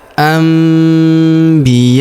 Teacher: nun sukunnya berubah menjadi mim ya